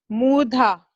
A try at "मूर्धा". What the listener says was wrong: Murdha. Murdha, you have to say. Dha is Mahaprana. See, where Mahaprana is there, that emphasis you have to give. Murdha. Dha, right?